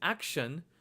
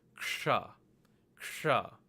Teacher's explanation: Sometimes Sanskrit teachers will use the word action as an example of the ksha sound, but it's not the best example because action, the sha in action, is palate based, whereas the sha in ksha is retroflex.